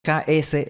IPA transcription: ks